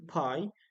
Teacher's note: you can see that the piece of paper moves when producing pie but it may not move when you produce the word by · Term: aspiration